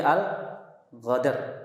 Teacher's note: lahjah mengubah huruf qaf menjadi huruf ghain. Al-Qadar jadi Al-Ghadar.